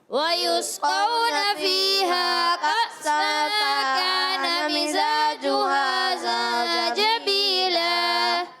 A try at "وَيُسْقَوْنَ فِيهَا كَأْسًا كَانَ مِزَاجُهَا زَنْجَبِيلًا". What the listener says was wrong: پیارے بچے، زنجبیلا یہ غنہ پورا کریں گے، آپ نے غنہ کم کیا ہے. وَيُسْقَوْنَ فِيهَا كَأْسًا كَانَ مِزَاجُهَا زَنْجَبِيلًا.